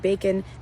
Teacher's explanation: And then unstressed part of the word bacon is kun. So the O in bacon is actually the schwa.